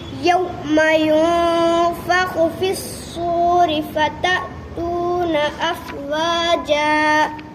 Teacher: نون ساکن کے بعد حرف اقوا میں سے فا آیا، ان کی آواز کو ناک میں چھپا کر پڑھیں گے